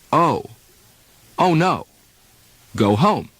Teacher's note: the front mouth muscularity the first is the english long o in standard American speech long o is a diphthong or double vowel